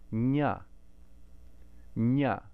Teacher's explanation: in the palatal we're using the top of the tongue, still not the tip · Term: nasal sound